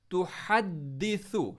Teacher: हा को middle throat से, सा को सॉफ्ट, तुहद्दिसु, दाल पर स्ट्रेस।